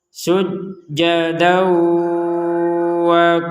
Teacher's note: Ini fathatain masuk ke wawu menjadi dawa disertai dengungan.